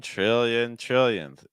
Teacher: when a T and an R linked together, it makes like a ch sound. Just like tra, like CH followed by an R. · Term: TR sound